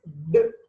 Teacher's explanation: And da, complete close, sudden release, plosive. For da sound, it is voiced, alveolar, plosive.